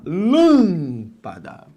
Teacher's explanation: É aquela cuja sílaba tônica não é a última, lâmpada, não é a penúltima, lâmpada, é a antepenúltima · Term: proparoxítona